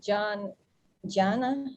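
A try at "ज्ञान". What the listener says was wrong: Gyan. You pronounce it like a gya. The JN is pronounced like a gya. So it's Gyan.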